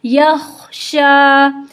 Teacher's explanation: خا میں ایک خرخراہٹ سی ہوتی ہے اور یہ واضح ہوتی ہے جب یہ ساکن حالت میں ہوتا ہے، یخشا۔ آخر، متحرک حالت میں بھی اس میں خرخراہٹ آتی ہے، تو خرخراہٹ کا خیال رکھیے گا۔